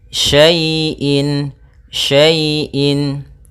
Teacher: Di sini ada fathah bertemu dengan ya sukun. Maka apabila ada huruf ya sukun didahului dengan harakat fathah, ini kita namakan dengan bacaan lin, yang mana ya dalam membacanya lembut